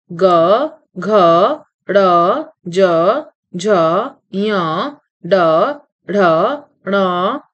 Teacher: जिन ध्वनियों के उच्चारण में स्वर तंत्रियों में कंपन होता है उन्हें सघोष कहते हैं। इनका उच्चारण करते समय यदि गले पर हाथ रखा जाए तो कंपन का आभास होता है।